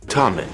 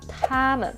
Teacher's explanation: For the Chinese, the tip of the tongue is more behind the upper front teeth, and you get a clear sound coming out right after.